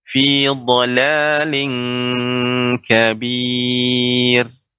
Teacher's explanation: Di sini ada yang pertama pada kata fi dhalalin kabir, tanwin bertemu dengan kaf, ini ikhfa dan dibaca dengan eng